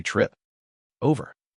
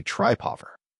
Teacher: My lips are already moving to the O before I've even finished the P.